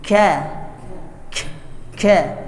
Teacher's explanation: makhrajnya maju ke depan ya pangkal lidah menempel ke bagian keras dari mulut kita ya sudah agak ke tengah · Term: Kaf